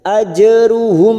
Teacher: mim sukun bertemu ain idhar safawi dibaca jelas tanpa mendengung